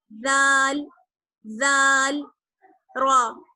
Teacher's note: جہاں سے ہم نے سا ادا کیا تھا وہیں سے ہم دال ادا کریں گے، زبان کی نوک اور ثنایا اولیہ کا کنارہ